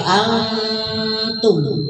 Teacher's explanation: Ikfa didengung kemudian nunnya samar ya jadi enggak Antum tapi Antum samar nunnya Kemudian didengungkan ya